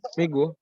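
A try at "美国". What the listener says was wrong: Bukan Meigo. Ingat G dibaca K ya. Meiko.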